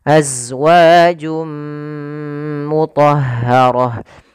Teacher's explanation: masukkan tanwinnya ke huruf mim suara nunnya hilang maka jadi suara n-nya hilang awalnya azwajun ketemu dengan mim masuk · Awalnya azwajun ketemu dengan mim, masuk mim maka berubah menjadi suara mim. Azwajum mutahharah. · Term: idgham bi gunnah